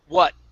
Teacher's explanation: My tongue goes up to the top of my mouth and it stops. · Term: stop T's